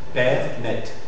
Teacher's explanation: c'est une voyelle orale antérieure, mi-ouverte ou semi-ouverte et non arrondie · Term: E ouvert